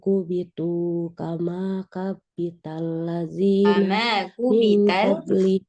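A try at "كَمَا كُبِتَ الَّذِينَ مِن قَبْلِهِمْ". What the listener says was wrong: Kama kubita, bukan kama kabita. Kama kubita. Ini, dari sini nih. Kan, yang saya kursornya ini. Kama kubital.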